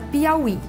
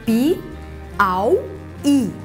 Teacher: O i é tônico e precedido de ditongo, mas é uma oxítona, está na última sílaba.